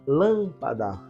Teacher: Então, última sílaba, penúltima, antepenúltima. Antepenúltima sílaba é a sílaba tônica